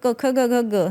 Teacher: तर क ख ग हे जे आहे ते कंठातून उच्चारण आहे